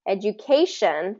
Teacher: Education is third syllable stress because of the suffix of shun. Okay, education, things that end in shun, we're going to stress the syllable right before that ending.